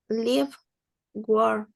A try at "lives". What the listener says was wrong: Lives. With S at the end. Lives.